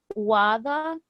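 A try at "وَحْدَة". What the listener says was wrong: But this first part of the word you say is not quite the right. Why it says wada is wa. Where's the he? The sounds of he. Do you see wahda?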